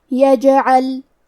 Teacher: جیم بھی حروف القلقلہ میں سے ہے تو ہم یہ حرف کو ہلاتے ہوئے یہ کلمہ کو پڑھیں گے